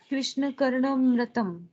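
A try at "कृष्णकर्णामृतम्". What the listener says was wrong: Is this Karna? Isn't there a bar on top? Dirga. Krishna Karnamritam.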